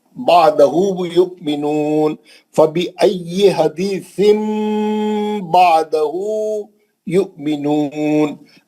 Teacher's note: तनवीन का नून था उसको मीम से बदल के गुन्ना करेंगे